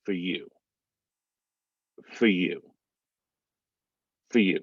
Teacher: still getting that u u that kind of vowel sound so you're gonna drop that r even with that y